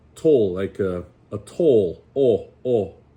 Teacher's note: the closest to the pure sound of O, it comes like before L's, like toll